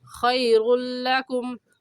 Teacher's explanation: تنوین کے بعد حروف یرملون میں سے، اس لیے اس لام پر غنہ نہیں کریں گے